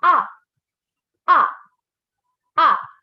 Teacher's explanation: your fourth tone, is a falling tone. It's just that it's a drop. It's a quick and short and sudden tone.